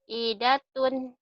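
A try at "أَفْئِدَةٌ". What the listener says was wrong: Afidatun. Kalau nggak bisa F itu kalau bibirnya manyun ke depan bisa. Af. Atau nggak ada giginya. Af. Ini af kan masih ada giginya. Af. Afidatun.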